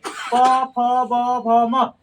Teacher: ये देखना जो ओष्ठ जो है ना दोनों आपस में सट जा रहा है